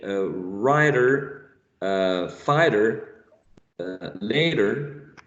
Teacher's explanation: Ryder Ryder you use a one sound that is called flat a flap is what you can hear in Ryder fighter later